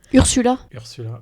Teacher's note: il y a le R un peu guttural, un peu raclé en fond de gorge